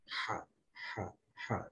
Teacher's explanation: Bila kita makan benda pedas, maka yang keluar adalah ada suara, tetapi yang lebih jelas keluar adalah angin. Ha. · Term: ha pedas